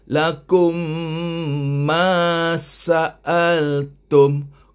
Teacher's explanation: Mim mati ni bertemu dengan mim. Jadi kena bunyi kan dia, dengung dia kum, dua harkat. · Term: idgham mislain